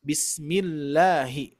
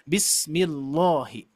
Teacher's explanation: kalau misalkan sebelumnya kasroh baru dibacanya tarkik, dibaca la